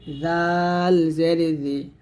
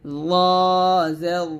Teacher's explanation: বলব ইয়া জের ইয়া জেরি এটা হবে জাল এটা হবে র জালটা পাতলা হবে র টা মোটা হবে